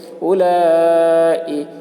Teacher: لام کے اوپر کھڑا زبر ہے، کھڑا زبر برابر ہوتا ہے الف مدہ کے، اس لیے کھڑا زبر کو ایک الف کے برابر کھینچ کر پڑھیں گے۔ حرف مد کے بعد حمزہ اسی کلمہ میں ہے، اس لیے مد متصل ہوا، مد متصل کو 3 یا 4 الف کے برابر کھینچ کر پڑھیں گے